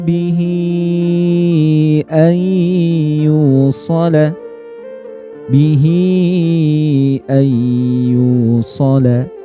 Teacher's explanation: dibaca panjang 4 sampai 5 harakat ya atau dua alif. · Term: mad silah thwilah